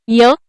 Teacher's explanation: य हे अक्षर तालव्य तालुकामय अर्ध स्वर आहे